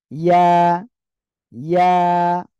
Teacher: জিহ্বার মাঝখান তার বরাবর উপরে তালুর সঙ্গে লাগান